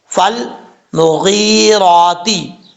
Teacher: فا، فا لام زبر فل، جب فا کو لام سے ملائیں گے تو فا کے درمیان جو الف ہے وہ گر جائے گا، اس کو ہم نہیں پڑھیں گے۔